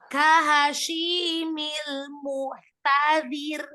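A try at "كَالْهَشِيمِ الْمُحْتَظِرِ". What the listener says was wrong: Alhamsnya lagi belum nampak, hanya muhtadzir. Sama ya, jadi lamnya juga alirkan sebagian, hanya roghah kan ya, kemudian rohnya di terakhir itu dialirkan juga sebagian ya, tawassul. Jadi kahashimil muhtadzir.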